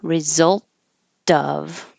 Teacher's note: The T connecting to the O before a vowel, A-E-I-O-U, and it will sound like a D because it's between two voiced sounds.